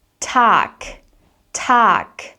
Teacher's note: the G at the end of words in general, so this is a general rule for German phonetics, will be pronounced as a K sound